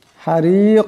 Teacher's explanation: রা নিচে জের আছে এরাকে পাতলা আওয়াজে পড়তে হবে